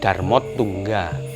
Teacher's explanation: Contoh misalnya Dharma Utungga, A plus U menjadi O, ditulis Darmot Tungga, menjadi Taling Tarung. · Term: panggarba